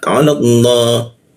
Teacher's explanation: Ala Allah keluarnya O tapi bibirnya A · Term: dibaca ke arah O